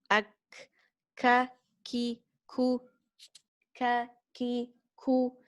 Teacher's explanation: The back of the tongue has to touch the hard palate, and this letter, when we pronouncing it, we have to let the air flow with it. Ak, ak. It's not ak, ak. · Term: kaf